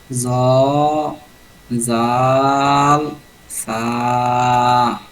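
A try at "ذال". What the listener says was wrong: জালটাকে আরেকটু নরম করতে হবে। জাল, থা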